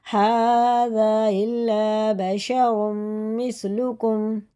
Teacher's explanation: اس میں ادغام ہوتا ہے کیونکہ تنوین کے بعد میم میں شد آ رہا ہے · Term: ادغام میم